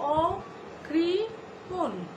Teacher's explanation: এখানে অটি নেতিবাচক অর্থ প্রকাশ করছে বলে আমাদের অয়ের পরে রিকার থাকা সত্ত্বেও সেই অয়ের উচ্চারণ বিবৃত হবে, অর্থাৎ অয়ের স্বাভাবিক উচ্চারণ এখানে বহাল থাকবে। তো আমরা এভাবে উচ্চারণ করব অকৃপণ, অকৃপণে যদিও মূর্ধন্য ন রয়েছে, আমরা এখানে দন্ত ন উচ্চারণ করব এবং নিচে অবশ্যই হসন্ত দিতে ভুলব না। · তাহলে এটা নেতিবাচক অর্থে কৃপণ না, না অর্থে বসেছে। তাই অকৃপণ শব্দের এই যে অ বিবৃত উচ্চারণ হবে, অর্থাৎ অ যেরকম স্বাভাবিক হয় সেই স্বাভাবিকভাবেই উচ্চারিত হবে